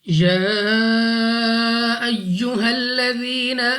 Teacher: या पर खड़ा जबर और उसके ऊपर है मद, तो हमने इसको दो नहीं बल्कि मद की वजह से 3 या 4 सेकंड तक खींचना होगा